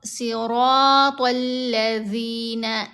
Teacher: اس کی ادائیگی کے وقت ابھی جیسے یہاں پر ذال ہے تو آپ کی زبان دانتوں کے درمیان میں آئے گی اور اوپر والے دانتوں کو زبان ہلکا سا ٹچ کرتی ہے